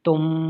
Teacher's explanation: میم ساکن کے بعد دوسری میم ہے، تو اب یہاں پر ہم جب اس لفظ کو پڑھیں گے تو اس میں غنہ کریں گے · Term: ادغام شفوی